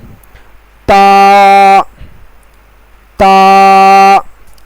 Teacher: تا کا حرف زبان کی نوک اور اوپر کے 2 دانتوں کے جڑ سے ادا ہوتا ہے